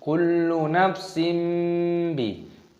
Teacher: Iklab itu artinya mengganti, maksudnya mengganti menjadi huruf mim. Makanya di sini ada mim kecil seperti ini.